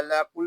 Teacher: قاف یہ حروف مستعلیہ میں سے ہے، اس کو پور یعنی موٹا پڑھیں گے